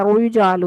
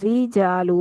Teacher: را کو باریک کرنے کے لیے آپ نے ہونٹوں کو چیرنا ہے ورنہ آٹومیٹکلی پر ہو جاتی ہے